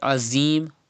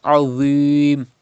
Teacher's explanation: You have to read with thicker voice. And dha is pronounced without whistle sound. Do not read azim, but read without whistle and thicker voice.